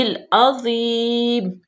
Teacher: یہاں پہ ہم نے وقف کیا تو یہ زیر ختم کر دی جائے گی